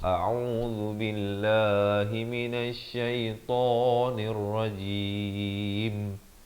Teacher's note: Pastikan hamzahnya itu makhraj di pangkal kerongkong, ain di pertengahan kerongkong dengan baris dhammah.